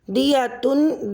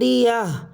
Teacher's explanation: یہ آپ نے دیکھا کہ گول تا پر سے دونوں نقطے اور دونوں پیش یعنی تنوین کے دونوں پیش ختم ہو جائیں گے، گول تا ہا ساکن سے بدل جائے گی